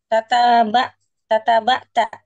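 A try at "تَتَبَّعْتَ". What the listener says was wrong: tatabba'. Ba'. Tatabba'nya tasydid. Tatabba'.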